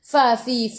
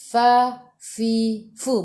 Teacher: gigi atas menyentuh perut bibir bawah